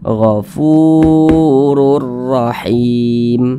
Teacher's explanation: baca damah Nah makanya huruf Fa Ini dibaca panjang Mad thii panjangnya dua harakat atau kira-kira dua ketukan